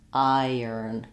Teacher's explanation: It's not a strong y. It's just connecting and gliding those two vowels together. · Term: y sound